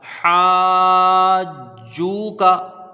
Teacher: ٹھیک ہے، ہا کے ساتھ الف مدہ ہے، حرف مد کے بعد جیم میں یہاں پر تشدید سکون لازم ہے، یہاں مد لازم ہوگا جس کی مقدار 3 الف 5 الف ہے۔ جیم کو واو سے ملائیں گے، واو مدہ ہے، 1 الف کی مقدار اس کی رہے گی، کاف میں زبر ہے، اس کو جلدی پڑھا جائے گا، حاجو کا، ٹھیک ہے۔